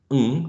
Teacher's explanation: which is quite nasal is allowed in English um in final position right